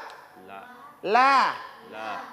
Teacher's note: Ya, penyebutan huruf lam itu di langit-langit bahagian depan.